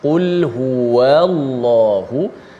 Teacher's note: Kalau saya buat gerak perlahan sikit, huwallahu, jangan huwallah, jangan wa itu disebut dalam keadaan nipis, bukan wa. Walaupun selepas tu disabdukan dalam lam, yang lam kena baca tebal, waw tu tetap nipis.